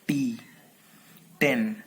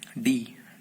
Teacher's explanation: T is voiceless alveolar plosive, and D is voiced alveolar plosive